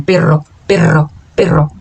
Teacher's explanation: Ele é um r chamado de r mútiplo porque a língua como se desse uma vibração mais intensa do que o R normal